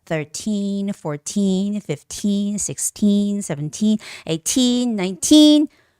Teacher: when you are saying these words you have to make sure that your stress goes on the double e part okay 13 14 so that e part gets longer it's teen